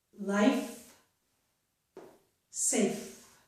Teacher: They are both made by very lightly putting our upper teeth onto the inner part of our lower lip and then forcing the air out of our mouth, right? But the F sound is voiceless, so we do not use our vocal cords, and the V sound is voiced, so we do use our vocal cords.